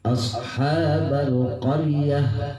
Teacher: Tuh tahnya hilang tapi menjadi H